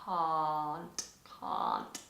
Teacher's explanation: in standard standard British English, open and long.